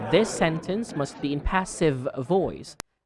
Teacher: it's a voiced th